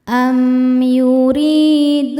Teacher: Sebab ada wau sukun sebelumnya berharakat dommah. Cara bacanya huruf dal dipanjangkan dua harakat. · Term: mad thobi'i zohiri